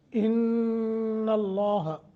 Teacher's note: नून के ऊपर शद है, नून मुशद्दत है, गुन्ना करके पढ़ें। लफ्ज़ अल्लाह को मोटा करके मुंह भर के पढ़ना है।